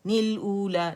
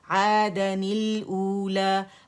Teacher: تو ہمیں پہلے سکون کے ساتھ کچھ کرنا ہے تاکہ دوسرا سکون پڑا جائے, تو ہم نے پھر تنوین کو توڑ دیا. تو جب الف کے ساتھ فتحتین کے ساتھ جب ہوتی ہے تنوین تو پھر الف بھی نہیں پڑھا جاتا